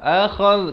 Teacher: Akhadh, kalau boleh saya tunjukkan sahabat-sahabat bila baca akhadh, hujung lidah ni keluar. Ni hujung lidah ni keluar di antara 2 gigi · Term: huruf zal